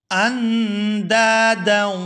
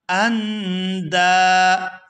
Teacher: آگے دال کو الف مدہ کی وجہ سے کھینچ کر ادا کیا جائے گا